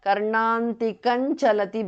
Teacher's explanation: because of sandhi anuswara changes to nya